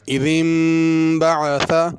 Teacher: نون کے اوپر میم لکھی ہوئی ہے، یہ میم پڑھی جائے گی اور غنہ بھی ہوگا